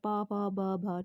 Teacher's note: बोलते हुए दोनों होठ टकरा रहे